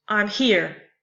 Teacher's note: two unstressed syllables followed by a stressed syllable if I say I'm here the words I am are unstressed · the words I am are unstressed and here is stressed. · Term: anapest